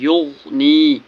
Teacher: غین پر قلقلہ نہیں ہونا چاہیے کیونکہ غین حرف قلقلہ نہیں، اس لیے اس کی آواز واپس نہیں آنی چاہیے